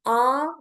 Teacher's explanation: When I say a my tongue is at the back.